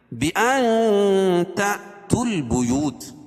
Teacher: بِأَن تَأْتُوا الْبُيُوتَ اخفاء حقیقی، کیونکہ نون ساکن کے بعد حروف اخفاء کے 15 حرفوں میں سے تا ہے تو یہ ناک میں آواز کو چھپا کر پڑھیں گے، اور حمزہ الف کے اوپر، یہ حمزہ کے اوپر جو جزم ہے تو یہاں جھٹکا ہوگا.